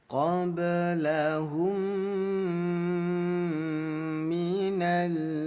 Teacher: Ada mim sukun bertemu mim namanya idgham mimi. Cara bacanya bunyi mim kita tahan dua ketukan ya.